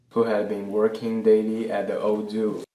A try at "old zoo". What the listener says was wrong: His pronunciation of old kind of left out the L a little bit. It sounded like old zoo instead of old zoo.